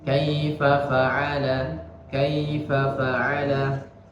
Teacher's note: fa yang pertama itu pendek, jangan dipanjangkan.